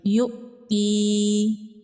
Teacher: حمزہ ساکن ہے، حمزہ ساکن کو جھٹکے سے پڑھیں گے